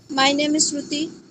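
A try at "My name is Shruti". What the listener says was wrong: नीचे डियर, नीचे नीचे, ऊपर मत जाओ। माय नेम इज श्रुति ऐसे मत बोलो, आराम से। माय नेम इज श्रुति, नीचे आओ।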